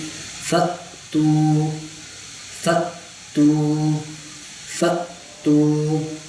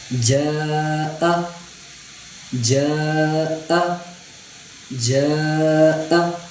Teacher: جب ہم حمزہ کو پڑھیں گے تو اس کو جھٹکا دے کر پڑھنا ہے، ہمیشہ جھٹکا دے کر پڑھنا ہے.